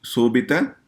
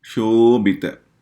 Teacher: it is not just a S, it is like Sha, SH sound